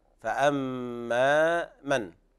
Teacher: طبعا هنا الفاء حكمها الترقيق، فأما من، والميم حرف غنة مشدد